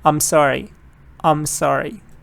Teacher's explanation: when you pronounce it fast you don't say aim you say um